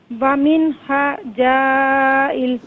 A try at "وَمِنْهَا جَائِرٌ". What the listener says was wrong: جائل نہیں جائر.